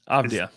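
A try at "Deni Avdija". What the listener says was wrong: Avdia. Now you're saying, it sounds like you're saying AVD, but it's ADV. Avdia.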